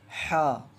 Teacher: اس کو پڑھنے کا طریقہ یہ ہے کہ یہ حلق سے ادا ہوتا ہے